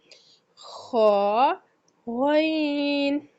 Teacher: खा और गैन जो है ये वाला, ये गैन और खा, ये हलक के ऊपर वाले हिस्सा से अदा किए जाते हैं।